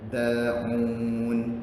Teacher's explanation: seakan-akan dalnya ada 2. Satu mati, satu hidup.